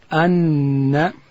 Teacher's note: نون ادا کیږي د ژبې غاړه به ولوړې وري ته وروړو